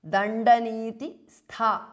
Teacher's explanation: The last tha is mahapranah.